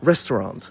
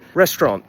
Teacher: Three syllables, stress on the first, but it can also be pronounced with two syllables, which is the way I do it.